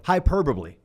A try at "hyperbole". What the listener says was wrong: you added an extra syllable. Hyperbole.